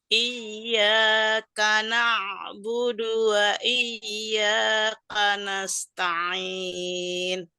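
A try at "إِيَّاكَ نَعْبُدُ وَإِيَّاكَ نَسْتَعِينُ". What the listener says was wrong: Dalnya diturunkan. Budu, bukan budu. Budu, dal. Iyyaka na'budu, bukan budu ya. Bukan budu tapi budu.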